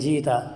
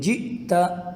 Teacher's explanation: وہ حمزہ جو ساکن ہو اس کے اوپر جزم ہو تو اس کو جھٹکے کے ساتھ پڑھیں گے، یوں نہیں پڑھیں گے جیتا بلکہ یوں پڑھیں گے جئتا۔ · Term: حمزہ ساکن